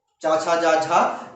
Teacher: तो जो ये वर्ड आ रहे हैं स्पर्श, ओके, तो स्पर्श व्यंजन आपके ये हो गए, 5 होते हैं, आप देख लीजिएगा। स्पर्श संघर्षी, स्पर्श करने में भी संघर्ष होता है, वो होते हैं आपके चा वर्ग।